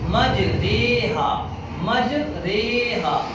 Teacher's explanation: ہم لوگ تقلیل کر کے یہ سوچ لیتے ہیں کہ ہم نے امالہ کر دیا، مجریہا مجریہا، یہ امالہ نہیں ہوا۔ امالہ ہے بالکل کسرے کی طرف جھکا دینے کا